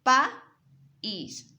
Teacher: Aquí vemos las vocales AI separadas.